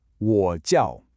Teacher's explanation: we've got a third tone, 我, followed by a sharp fourth tone, 叫. You can almost feel that little dip and then that immediate quick drop, 我 叫.